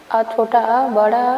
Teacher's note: ये कंठ से उच्चारण होते हैं माने हमारे गले वाले भाग से